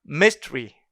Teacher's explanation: 슈아 사운드를 아예 제거해 버리는 거죠